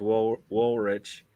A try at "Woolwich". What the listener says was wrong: Woolwich. Woolwich. It's a silent W.